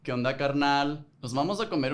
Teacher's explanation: Generally, Mexican Spanish is pretty nasal, and often the tone goes up and it's thrown out toward the end of the sentence.